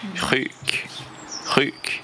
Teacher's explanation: Alors RUK, ça veut dire malade, et c'est un U long